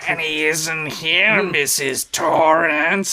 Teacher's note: It's got that vocal fry.